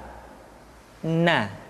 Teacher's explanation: huruf na caranya menyentuhkan ujung lidah kita di antara posisi ro dengan la